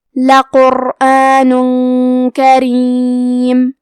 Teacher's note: کلمت کریم میں حرف الرا کے نیچے زیر ہے، یہاں را کا حکم ہے ترقیق، تو ہم حرف الرا کو پتلی آواز میں پڑھیں گے · ہم تنوین کو چھپاتے ہوئے اور غنہ کے ساتھ یہ حکم کو ادا کریں گے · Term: اخفاء